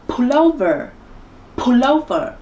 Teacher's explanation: cô đặt rõ và mạnh hơn hai cái âm còn lại Bởi vì trọng âm được rơi vào âm Tiết đầu tiên